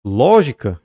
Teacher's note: é uma palavra proparoxítona portanto acentuada na antepenúltima sílaba